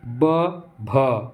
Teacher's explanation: अब भ बोलते तो थोड़ा सा हवा ज़्यादा मात्रा में निकलती है, ब बोलते तो कम मात्रा में निकलती है